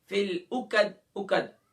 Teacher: عین کو گلے کے مڈل سے ادا کریں گے وسط حلق سے، قوف کو اس کے مخرج سے ادا کریں گے، یعنی زبان کی جڑ و تالو کے نرم حصے سے.